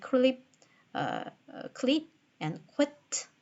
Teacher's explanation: even with an intervening consonant, the aspiration takes place